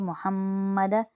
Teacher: میم مشدد آ رہا ہے، 1 الف کی مقدار غنہ کریں گے۔